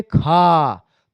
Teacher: खा से बहुत ज्यादा वायु बाहर निकलती है, तो खा क्या हो जाएगा, महाप्राण हो जाएगा।